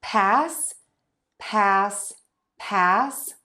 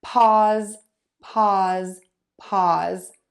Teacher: the voice sound is actually going to make the vowel before it sound a little teeny tiny bit longer so this vowel might sound a little bit longer in pause